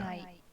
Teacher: The N is like a fake N. It's not really there. It's ren only in the back of your mouth.